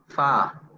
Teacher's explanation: Fa itu pita suara kita nggak bergetar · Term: hamas